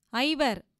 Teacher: ஐகாரம் தன்னுடைய இரண்டு மாத்திரை அளவிலிருந்து குறைந்து ஒலிப்பது ஐகாரக் குறுக்கம் ஆகும்